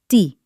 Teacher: Not T with a breath of air, but a clean T.